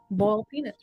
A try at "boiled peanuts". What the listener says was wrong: It's not bull, B-U-L-L, bull peanuts. But you're saying boiled peanuts. Boiled peanuts.